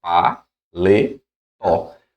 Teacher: oxitona sílaba tônica na última